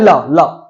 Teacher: जब ल बोलो तो आपकी जीभ किस पे टच हो रही है बेटा? दांत पे टच हो रही है। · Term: दंतीय ध्वनि